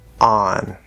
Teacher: The full pronunciation and the way we think of it is ah, the fifth vowel sound, and a regular front n, on. However, in fast speech, you will sometimes hear this be pronounced more like a schwa like uhn or a syllabic n.